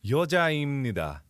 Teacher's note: It normally has a b sound, but in this form, it comes into 입니다. Where it almost sounds like an M.